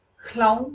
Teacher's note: మీరు హ్లౌం అనాలి అంటే నాలుక పైన పంటికి తగలాలి. పంటిని వాడుతున్నారు, నాలుకని వాడుతున్నారు.